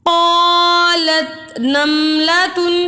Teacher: قاف حروف مستعلیہ ہے اور مستعلیہ حروف کو ہمیشہ ہر حالت میں پوری یعنی موٹا پڑھا جاتا ہے